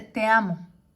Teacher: La sinalefa lo que hace es entonces juntar en una sola sílaba la última palabra que termine en vocal y la regla es que la siguiente palabra tiene que empezar en vocal